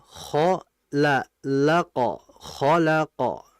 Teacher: Nah, jadi hati-hati, lam tidak boleh ikut ketebalan juga seperti halnya kha dan qaf